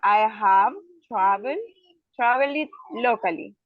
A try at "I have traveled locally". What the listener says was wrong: Traveled locally. All right. Thank you so much.